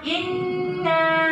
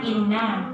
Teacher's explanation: Kemudian dia kurang gunnah. Gunnah itu artinya dengung, dia ditahan sebentar.